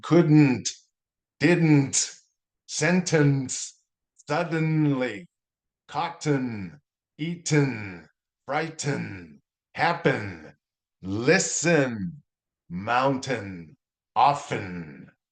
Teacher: So the N just kind of carries on a little bit longer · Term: the long N